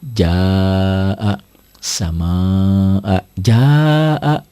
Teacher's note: Mad tobi'i bertemu dengan huruf kosar khusus hamzah, itulah mad wajib muttasil.